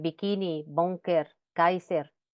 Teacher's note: es sordo porque no vibran las cuerdas vocales · colocando la lengua en la parte posterior con el velo del paladar eh realizando un cierre total y momentáneo y se refiere que